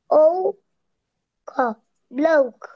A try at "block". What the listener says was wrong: না না, ওটা ও কেন হচ্ছে? ওটা তো সিবিসি ওয়ার্ড। আমি যে বুঝাই দিলাম এখানে, এই যে অ হবে, অ, অ, ল, অ, ক, ব্লক।